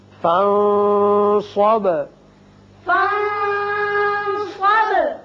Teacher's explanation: فَانصَبْ نون پر اخفا، با کی صفت قلقلہ